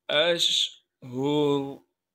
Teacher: रा को वक़फ़ की हालत में मोटा करके पढ़ेंगे।